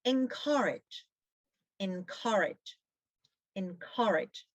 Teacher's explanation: The stress is on the second syllable. It's on C. Means give courage to or increase the confidence of. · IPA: /ɪnˈkɜːrɪdʒ/